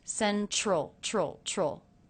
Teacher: Did you notice I'm making more of a CH sound here instead of a T sound for the T in central?